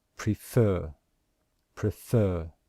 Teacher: the word prefer, can you hear that we stress the second syllable? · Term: stressed syllable